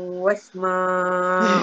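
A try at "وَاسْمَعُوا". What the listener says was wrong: Wasma ma tu panjang kenapa panjangnya? Wasma'u. Entah bulat tak tu? Anda tegur tu entah bulat tak? Wasma'u.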